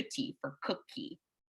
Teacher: these back sounds k and g are being pulled up to the front we're using our tongue tip to produce a t or a d